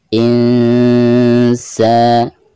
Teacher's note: cara membaca nun sukun tersebut itu harus disamarkan disertai dengan guna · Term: ikhfa awsat